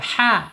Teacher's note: Haya ha ya, ha secara makhraj ada di al-khalq, tenggorokan di mana tenggorokannya ada bawah, ada tengah, ada atas. Ha ini masuk ke tenggorokan tengah.